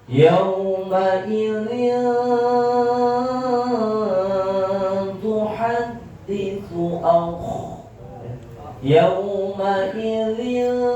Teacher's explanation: Ketentuan ikhfa hakiki taqarrub apabila nun sukun atau tanwin, baik itu tanwin fathah, tanwin kasrah maupun tanwin dhamma, bertemu dengan salah satu huruf ikhfa hakiki taqarrub yang 3, maka praktek membacanya atau ikhfanya, suara ikhfanya mendekati huruf N